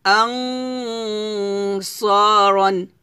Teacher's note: এখানে গুণনাটা মোটা হবে, কারণ সদ কিন্তু মোটা হরফ। তো যেহেতু নুন সাকিনের পর সদ আসছে অবশ্যই ইকফা গুণনা হবে, তবে গুণনাটা মোটা করতে হবে।